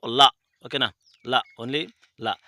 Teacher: దంతమూల్య పార్శ్వకం అంటే మనకు ల